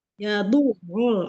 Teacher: ain tasdidnya ditekan lagi